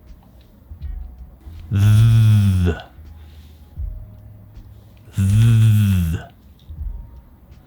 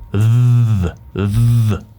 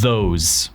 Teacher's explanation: Este sonido es muy parecido al otro TH, pero se produce desde la garganta con una vibración. Es lo mismo que antes, pero con vibración.